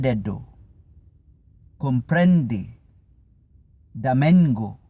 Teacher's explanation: con la punta de la lengua tocando entre el medio del paladar y hacia los dientes superiores